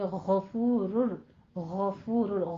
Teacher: غین کو آپ نے ادنے حلق سے موٹی آواز کے ساتھ، حروف مستعلیہ میں سے ہے